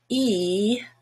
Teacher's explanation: green is very high and very much to the front just behind the top front teeth